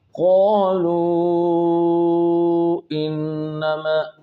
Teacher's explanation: قو میں قاف موٹا اس کے ساتھ الف موٹا